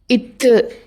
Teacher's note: இத்து அப்படின்னு சொல்கிறப்ப காற்று வெடித்து வாய் வழியாக வெளியேறும். இது வெடிப்பொலி.